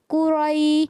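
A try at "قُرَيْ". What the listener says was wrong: अच्छा, रा या ज़बर रई, लंबा नहीं करना। यालीन है, या साकिन से पहले ज़बर आ जाए, यालीन।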